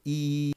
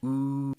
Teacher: Really, really far forward. E, the tongue is high, right near the teeth. And oo, the back of the tongue comes backwards, comes really far backwards. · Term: front vowel